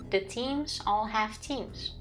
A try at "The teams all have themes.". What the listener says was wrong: No, you don't. You said the teams all have teams. Yes, exactly. So you hear it different in your ears.